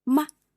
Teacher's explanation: the neutral tone is very short and light.